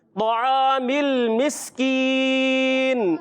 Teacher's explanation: سین کی ادائیگی کلیئر سیٹی کے ساتھ